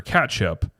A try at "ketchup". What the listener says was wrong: It's an E, ketchup. You said ketchup. You're literally saying ketchup like I'm catching up with you.